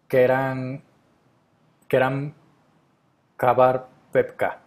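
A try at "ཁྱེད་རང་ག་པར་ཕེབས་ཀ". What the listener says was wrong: Perfect. Done.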